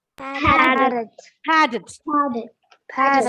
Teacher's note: Stress should be given to the initial syllable.